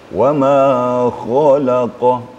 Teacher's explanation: Jadi harus ada getaran kha. Apalagi berdekatan dengan qa.